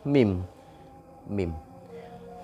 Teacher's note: mim ini nanti termasuk kepada makhraj as-syafatain atau dua bibir bibir atas dan bibir bawah itu bertemu